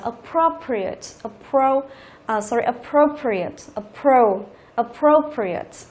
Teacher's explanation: Thế thì ở đây chúng ta có cái đuôi là đuôi ate đúng không? Thì trọng âm của từ sẽ rơi vào âm tiết thứ ba từ dưới lên, 1 2 3, như vậy rơi vào cái pro này.